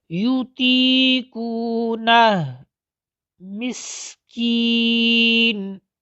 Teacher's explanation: یا ساکن سے پہلے زیر ہو تو اس کو کہا جاتا ہے یائے مدہ، یہ منہ کے خالی حصہ سے ادا ہوتی ہے۔